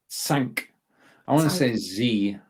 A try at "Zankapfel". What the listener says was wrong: No, think of a TS. Zankapfel.